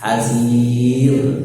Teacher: Hasir, rohnya di situ sebelumnya adalah kasroh, maka rohnya tipis. Hasir, tidak perlu mencucunya.